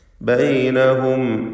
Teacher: ബൈനഹും എന്നതിൽ അന്ത്യത്തിലെ സാക്കിനത്ത മീമിനെ ഇൽഹാർ ഷഫവി നൽകി മണിക്കാതെ വെളിവാക്കണം.